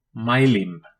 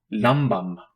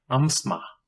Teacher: It is a bilabial nasal, pronounced like the M in magma.